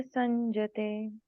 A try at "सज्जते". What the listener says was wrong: संजते कहाँ है? सज्जते।